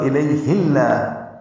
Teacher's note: اگر ملا کے پڑھنا ہے تو لام اس میں جرالہ باریک پڑھا جائے گا کیونکہ اس سے پہلے ہا کے نیچے زیر آ رہی ہے. اور اگر یہیں سے شروع کرنا ہے تو لام اس میں جرالہ پر ہوگا.